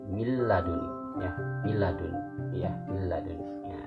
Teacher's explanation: Tapi kalau dengan tajwid kan ya, yaitu maka hukum bacaan nun mati ini bertemu dengan lam ini ya dibaca huruf idgham namanya. Ya, jadi langsung bacaannya itu nunnya itu hilang ya, langsung dimasukkan ke huruf lam. Jadi milladuni ya, milladuni ya, milladuni ya gitu. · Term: idgham bila gunanya